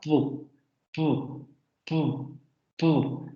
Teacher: suena como explosiones o son consonantes momentáneas porque ocurren de manera muy rápida de hecho este tipo de consonantes no se pueden mantener en